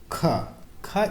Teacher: ख एक स्पर्श व्यंजन भी है कंठ से निकलने वाली ध्वनि भी है आघोष भी है और महाप्राण ध्वनि है